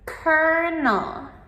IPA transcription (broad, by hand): ˈkɜːrnəl